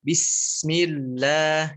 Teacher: Bismillahnya ada ketukan, ada jeda 1 harokat ya